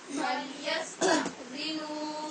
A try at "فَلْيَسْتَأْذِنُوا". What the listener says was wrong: یہاں ایک تو حمزہ ساکن پہ جھٹکا مکمل ہونا چاہیے، دوسرے نو کے آگے واو مدہ ہے، اس کی آواز کو لمبا ہونا چاہیے، یعنی یہ بعد میں پڑھنے کی احتیاط بتا رہی ہوں.